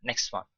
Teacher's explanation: next one T is dropped here